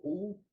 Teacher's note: While phonating U, the tongue gets elongated and the tip of the tongue retroflexes a bit. So U, you will see that the tongue gets retroflexed a bit.